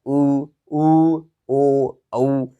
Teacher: पहला हमारे पास आवृतमुखी है दोस्तों। आवृतमुखी का मतलब ये होता है कि हमारे जो ओठ है वो ओठों की आकृति गोलाकार में होती है